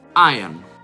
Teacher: Prima di tutto, la R è muta.